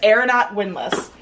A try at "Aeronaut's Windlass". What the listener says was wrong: Aeronaut's You just didn't have the S, I'm sorry.